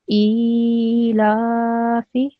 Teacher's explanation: I'm making it long for 2 seconds, my alif sound.